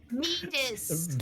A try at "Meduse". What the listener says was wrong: Meduse. It's a D. There's no T.